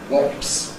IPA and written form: wɒps (wasp)